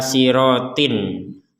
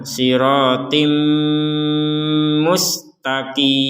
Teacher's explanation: Yang sama di sini adalah memasukkan ya harokat fathat kasrotain ini kepada huruf mim. Tanwinnya atau kasrotain dimasukkan kepada huruf mim. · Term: disertai dengungan